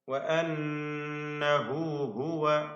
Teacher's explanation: ഷദ്ദ് നൽകപ്പെട്ട നൂൻ, നൂൻ മുഷദ്ദദ 2 ഹറക്കത്തിന്റെ അളവിൽ മണിക്കണം. അതിൽ 2 ഹാ തുടർച്ചയായി വരുന്നു.